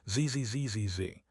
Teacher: And the ending is not an S. It is a vibrating Z sound. ZZ ZZ. If you don't vibrate the Z, it sounds like this.